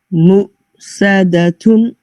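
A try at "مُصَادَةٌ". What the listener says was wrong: Sad a little bit more heavier. Sa. Sad little bit more heavier. So try saying us. And then say sa. Sadatun. When you connect it to story, it's going towards seen. So keep it on the sa.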